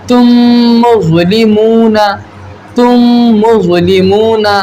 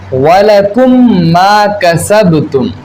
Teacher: ادغام شفوی ہوگا، یعنی ہم وہاں غنہ کر کے پڑھیں گے